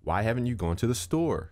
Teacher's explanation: My pitch goes up at the end.